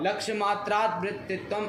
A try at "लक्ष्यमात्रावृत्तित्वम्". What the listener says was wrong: मात्रात क्या पंचमी लगा रहे हो? लक्ष्य मात्रा वृत्तित्वम, लक्ष्य मात्रे अवृत्तित्वम, सप्तमी तत्पुरुष समास किया और कुछ नहीं है।